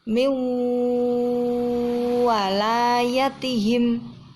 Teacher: Mendengungnya masuk di makhraj huruf waw. Jadi harus mencucu. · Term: idgham bi gunnah